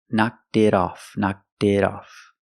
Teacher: The T in it is a fast D.